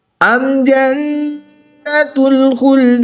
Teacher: नून मुशद्दिद में हमेशा गुन्ना होता है , तो यहाँ पर हम गुन्ना करके पढ़ेंगे। أم جنة الخلد